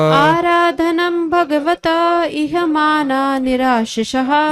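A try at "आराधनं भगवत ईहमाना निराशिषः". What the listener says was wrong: यह नहीं है, ई है, ई है।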